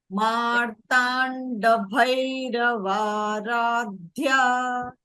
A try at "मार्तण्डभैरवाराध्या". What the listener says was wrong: So in this, one is the Mahapranaksharas, and second is I couldn't hear the Dirgha in this case correctly. That is after Matanda Bhairava. I could not hear the Dirgha for Bhairavara. That is before Thya.